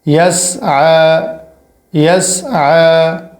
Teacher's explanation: یا سین زبر یس، عین کھڑا زبر ع، یس ع، عین کے اوپر کھڑا ہے اور یہ والی یا نہیں پڑھی جائے گی، اور عین پر جو کھڑا ہے یہ الف جتنا کھینچا جائے گا، زیادہ نہیں